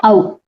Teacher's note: ఔ అనేది same ఐ లాగే సంయుక్త అచ్చు, ఇది రెండు అచ్చుల కలయిక. ఆ మరియు ఉ, ఈ రెండు అచ్చుల కలయిక ఔ, కాబట్టి ఇది సంయుక్త అచ్చు. అలాగే కంఠి ఓష్ట్యం.